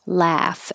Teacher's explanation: the vowel is ah so open and keep your lips back